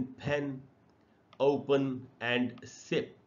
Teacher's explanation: जब bilabial sound को बोलेंगे तो दोनों होठों को यूज करेंगे और हवा का एक झोंका बाहर निकलना चाहिए। तब इस तरीके से बाइलेबियल साउंड को आर्टिकुलेट करते हैं।